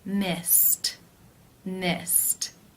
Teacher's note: The final infinitive sound is S, the S sound. That is unvoiced, so it is case 1, where the ED is pronounced as the T sound.